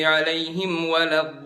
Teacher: Di bagian olin, ngangkat sejenak itu namanya naber.